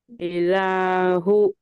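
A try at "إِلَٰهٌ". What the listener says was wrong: इलाहुन है, दो पेश है ना बेटे यहाँ पे।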